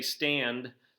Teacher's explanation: You have that D sound at the end of stand, but when you say stand, in a lot of cases that D isn't really heavily emphasized. So within a poem, within a song, you could say stand and man do rhyme, even though we know that's not truly the case.